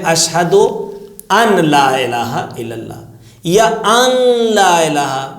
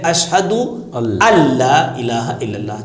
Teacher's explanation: کچھ لوگ کہتے ہیں اشہد ان لا الہ الا اللہ، یا ان لا الہ، ناک میں تھوڑا سا نون کو لے کر آتے ہیں، جبکہ یہاں پہ نون بالکل نہیں آئے گا، سیدھے اشہد اللہ الہ الا اللہ، چونکہ نون کی آواز کو نہیں لانا ہے سامنے